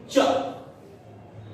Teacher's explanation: आपकी जीभ जो है वो ऊपरी वाले जो आपके दांत हैं उसके ऊपर मसूड़े के पास लगेगी